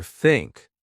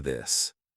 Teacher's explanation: Put your tongue between your teeth. Push air out for think. Add voice for this.